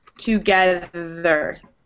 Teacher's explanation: And then there's the voiced TH, where it vibrates. And that's in words like brother, together.